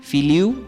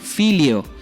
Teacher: Hemos elegido la pérdida de la consonante M al final de la palabra, filiu sería el resultado, y la apertura de la U que se convierte en una O, es decir, filio.